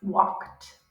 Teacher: D at the end makes a t sound